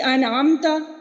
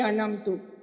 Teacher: جہاں پہ زبر تھا وہاں پیش پڑھ دی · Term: حرکات و سکنات میں تبدیلی